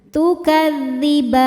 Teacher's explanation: Maka ba nya panjang, boleh dua, boleh empat atau enam harakat asal konsisten dalam sekali duduk. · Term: mad arid lisukun